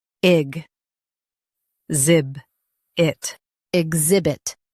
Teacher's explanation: Emphasize zib and keep it light